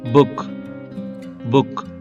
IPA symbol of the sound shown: ʊ